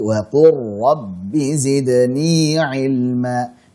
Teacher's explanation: Yani wa qur, bukan wa qul, bukan jelas, tapi wa qur rabbi zidni ilma. Jadi lamnya melebur ke huruf ra. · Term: idgham